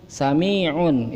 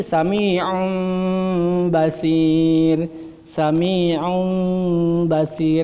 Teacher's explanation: Suara nun mati itu ditukarkan ke mim. Ditukarkan suara nun mati ke mim.